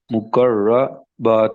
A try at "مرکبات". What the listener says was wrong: نہیں نہیں نہیں، مکر را پہلے آئے گا کاف بعد میں آئے گا. مرکبات.